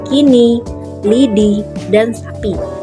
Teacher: direalisasikan sebagai bunyi I kecil, non-kapital apabila berada pada silabel terbuka atau silabel tak berkoda, seperti pada kata kini, lidi, dan sapi.